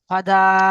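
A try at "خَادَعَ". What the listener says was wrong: দা টান আছে। এটা জিম আলিফ ভাই। খ, এখানে টান আছে, এখানে টান দেন, এখানে টান নেই, এখানে কেন টান দিচ্ছেন? খদা, বলেন। খদা, বানান করেন। হট ডান দিকে নয়, আলিফের ডান দিকে জবর এসেছে।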